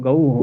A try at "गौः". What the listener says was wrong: गऊ हो, गुरु हो जैसे गऊ हो। नहीं, वो दीर्घ नहीं करना है, गऊ हो, गुरु